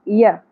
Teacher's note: یا کے اوپر بھی ایک ہی زبر ہے، آدھی الف یا ایک ہی حرکت کے برابر کھینچنا ہے